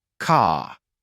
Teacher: in British English however the r is often softer and less pronounced particularly at the end of words for example car might sound more like car the tongue doesn't